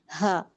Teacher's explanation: इसकी जो हमारी साउंड रहती है यानी जब हम इसको अदा करते हैं तो सीने की तरफ इसमें जाती है। सीने के करीब जो हमारा यह हिस्सा रहता है मुंह के करीब थोड़ा मुंह से दूर नीचे की तरफ यह सीना है।